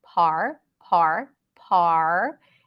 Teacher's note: word party here we have a soft R par par par so you just suggest that there is an R sound you can hold it out for a little bit